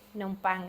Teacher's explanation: the bang is the word that is accented